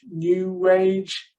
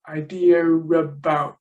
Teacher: there seems to be an R coming between idea and about